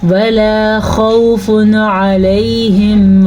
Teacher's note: تنوین کے بعد والا حرف عین حروف ہلکی میں سے ہے، تو ہم نون تنوین کو ظاہر کر کے پڑھیں گے، بغیر غنّے کے پڑھیں گے